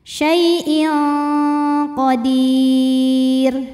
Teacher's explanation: tanwin dibunyikan samar-samar, siap-siap ke qaf disertai dengung. Dengungnya besar ya karena qaf makhrajnya jauh dari nun. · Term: ikhfa